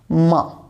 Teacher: Then we have a flow and thrust of air and we pronounce ma. With the contact of both these two lips, we pronounce ma. Without the contact of these lips, we cannot pronounce ma.